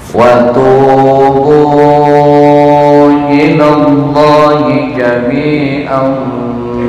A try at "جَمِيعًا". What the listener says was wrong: Nggak boleh dengung. Jami. Tanwinnya tuh tegak lurus ya, bukan miring.